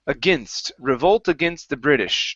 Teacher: All right, let's go to the word against here. So instead of saying against, with a long A sound, it's a short I